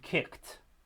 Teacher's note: the words it attaches to to match it in voicing so with kick we have a voiceless velar stop at the end so the the duh becomes a ta